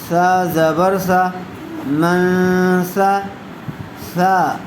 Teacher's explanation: سا کو نرم آواز سے ادا کریں گے، سا اور سین دونوں میں فرق کرنا ہے۔